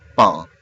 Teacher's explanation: the movement of the final N from an alveolar consonant to a velar one